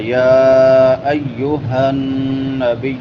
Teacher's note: ہا بڑی ہا ہے حلق کے آخری حصے سے، جس کو اقصی حلق کہتے ہیں